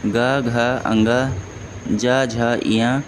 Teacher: जिन ध्वनियों के उच्चारण में स्वर तंत्रियों में कंपन हो उसे घोष ध्वनि कहते हैं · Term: घोष ध्वनियाँ